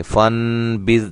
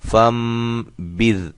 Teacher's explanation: نون ساکن کے بعد اگر یہ با آ جائے نا تو اس میم لکھی ہو یا نہ لکھی ہو تو اس نون کو ہم میم سے بدل کر پڑھیں گے